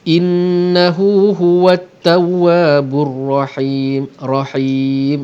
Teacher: him mad arid li sukun, kita panjangkan waqaf kita 2 harakat ataupun 4 harakat ataupun 6 harakat